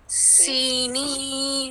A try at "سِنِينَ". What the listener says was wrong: سینین نہیں ہے. سنین جی